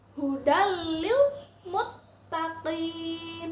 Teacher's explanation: tanwinnya lebur ditasydidkan ke huruf lam